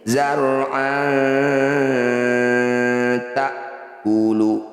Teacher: Apabila ada nun sukun atau tanwin bertemu tak, dal atau to, disebut aqrab karena pergeseran lidah ketika dengung dekat atau sedikit saja · Fathah tanwin bertemu tak disebut bacaan ikhfa aqrab. Cara bacanya bunyi fathah tanwin, dengungkan 2 harokat, tahan 2 ketukan.